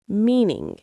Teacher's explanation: The stress is on the first syllable mean.